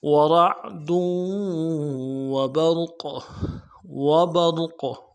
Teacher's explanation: ورعد وبرق وبرق، را کو موٹا کریں گے، قاف کے اوپر قلقلہ ہے، تنوین ہے لیکن یہ ٹھہرنے کی وجہ سے قلقلہ ہوگا